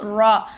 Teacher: நம்ம நுனி நாவை மேல் முரசுல வச்சு நம்ம சொல்லணும். சரிங்களா கரெக்டா அந்த நுனி நாவை மேல் முரசுன்னா அந்த நுனி நாக்குக்கு மேல நாக்க உள்ள வச்சுக்கோங்க வாய்க்குள்ள வச்சிட்டு அதுக்கு நேரா மேல இருக்கு பாத்தீங்களா அதுதான் வந்து மேல் முரசுன்னு சொல்லுவாங்க.